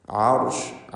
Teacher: ഐന് മഖ്റജിൽ നിന്ന് വ്യക്തമാക്കി ഉച്ചരിക്കണം. തൊണ്ടയുടെ മധ്യം. റാഇന് തഫ്ഖീം കൊടുക്കണം, കാരണം അതിന് സുക്കൂൻ മുമ്പിൽ ഫത്ഹുമാണ്.